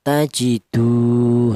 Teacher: panjangnya satu alif atau dua harakat atau dua ketukan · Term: mad thai, matobi'i